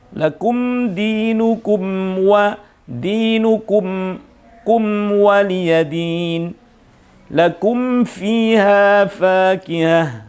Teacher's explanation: jangan sampai mim ini terbuka sedikit pun disebabkan karena ketemu waw dan ketemu fa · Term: mim sukun